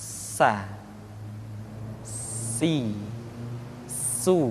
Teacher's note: diucapkan sebagaimana kita mengucapkan huruf sah yaitu ujung lidah di antara dua gigi seri kita · Di antara sifat yang menonjol ketika kita mengucapkan huruf sa atau huruf sin adalah sifat as-safir, di mana ketika kita mengucapkan huruf sa ada suara tambahan yang menyerupai dengan suara belalang. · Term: huruf tsa